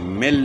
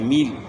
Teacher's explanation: قَعَامِل، میم کی زیر ہے، اور زیر کو جو ہے نا مجہول نہیں پڑھنا، معروف پڑھنا ہے